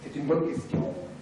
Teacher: c'est tendre le N de bonne qui n'était pas suffisamment tendu et relâcher le reste. Donc ici on joue sur deux paramètres en fait, tension et relâchement.